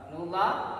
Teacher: Lam jalalah jatuh setelah huruf yang di garis atas maupun depan pasti lam jalalah dibaca tafkhim, artinya tebal.